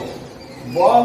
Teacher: ব হচ্ছে অল্প প্রাণ এবং সঘোষ বর্ণ